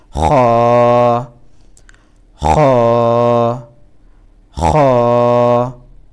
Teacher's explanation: আমরা যেভাবে কফ ফেলানোর সময় এভাবে করি, ঠিক এভাবেই উচ্চারণটা